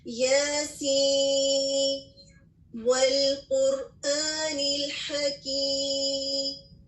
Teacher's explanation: آپ نے درمیان میں سانس نہیں لیا، لیکن آپ نے نون پر اظہار کیا اور اس کے بعد آپ نے واو کو واضح طور پہ پڑھا